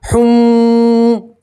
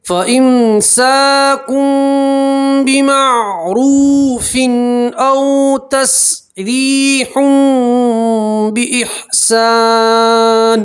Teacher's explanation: تنوین کے بعد با آتی ہے تو تنوین کو آپ چھوٹی سی میم سے بدلیں گے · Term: قلب